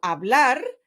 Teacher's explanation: in the word, for example, hablar, the stress falls on the last syllable, which is blar.